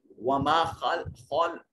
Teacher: خا کو موٹا اور پر کر کے پڑھیں گے، حروف مستعلیہ میں سے ہے